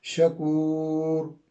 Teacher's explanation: وقف کی وجہ سے مد ہوگی، یہ 3 سے 5 الف کے برابر ہے